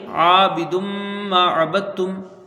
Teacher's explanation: عین کو ایک الف کے برابر کھینچ کے پڑھیں گے